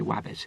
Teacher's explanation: the R becomes a W, like wabbit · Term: rhoticism